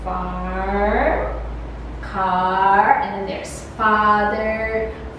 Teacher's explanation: the length of the sound ah is somewhat longer a little bit longer than the ah as in so the examples are farm car